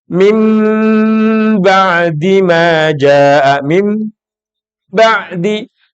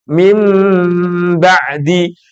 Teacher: Nun ketemu ba, bacaannya iqlab. Dan nun ini yang ketemu ba mesti makharijul hurufnya, keluarnya huruf di rongga hidung.